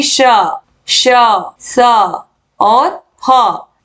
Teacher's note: जिन वर्णों के उच्चारण में वायु उच्चारण स्थान से छूकर सीटी की ध्वनि के समान बाहर निकलती है वे उष्ण व्यंजन कहलाते हैं